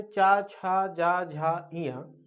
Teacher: ये आपका चा वर्ग है। ये हमारे तालु से निकलते हैं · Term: तालव्य